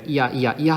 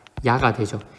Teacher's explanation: 이 야가 된 순간 결국 이 모음이 뭘로 바뀐 거냐면 J로 바뀐 겁니다. 그러니까 어느 빨리 발음하다 보면 이 모음이 J로 바뀌게 되고 그러면서 이게 야가 되는 거죠. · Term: J개 상향 이중모음